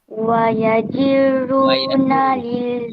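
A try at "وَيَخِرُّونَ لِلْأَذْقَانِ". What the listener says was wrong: Wa yakhiru. Yang tu huruf kha bukan huruf jim. Wa yakhiruna lil azqani.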